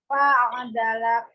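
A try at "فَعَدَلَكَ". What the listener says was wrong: Boleh nggak kafnya dikasih sifat hamsnya kalau yang ini? Kafnya ya.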